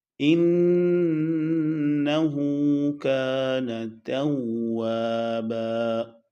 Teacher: انہو کان توابا، نون کو بالکل لمبا نہیں کریں گے کیونکہ اس کے بعد الف نہیں ہے، اور کان توابا، با پہ دو زبر ہے، وقف کی حالت میں ایک زبر اور الف پڑی جائے گی